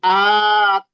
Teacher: A-nya di ayun dua harokat atau dipanjangkan ya kurang lebih